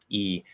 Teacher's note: the jaw kind of closes up a bit, the lips spread apart